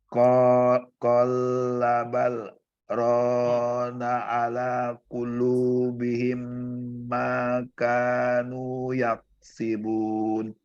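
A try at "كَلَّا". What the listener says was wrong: Sekali lagi ya, bukan kola tapi kalla. Kalla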